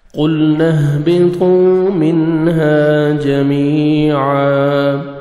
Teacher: قاف کو موٹا کر کے پڑھیں گے. لام کو آپ نے ہلانا نہیں ہے.